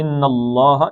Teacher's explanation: اللہ کا لام موٹا پڑھنا، پیچھے زبر آگے، ان اللہ، ان نون کو دو حرکتیں کھینچنا، ان اللہ، تو ان اللہ یجزی میں کیا قاعدہ ہوا جی؟